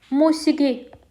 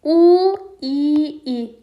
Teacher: Görürsüz u qalındı amma iki dənə i incədir. Bunu heç bir tərəfə yaza bilmədik.